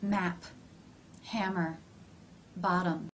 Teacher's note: this sound is simply made by pressing the lips together lightly while making a sound with the vocal chords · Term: the M consonant, M consonant